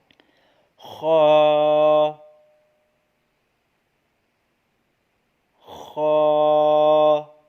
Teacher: یاد رہے یہ بھی حروف حلقی ہے، یہ ہمارے گلے کے اوپر والے حصے سے ادا ہوتا ہے